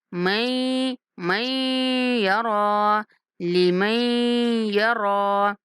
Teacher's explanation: یوم یتذکر الانسان ما سعی، وبرزت الجحیم لمن یری، وبرزت الجحیم، وبرزت الجحیم، جحیم ہا کے بعد جائے مدہ ہے تو ہا کو کھینچنا ہے، جحیم لمن یری، میم کو یا کے ساتھ ملاتے ہوئے غنہ کے ساتھ ادا کریں گے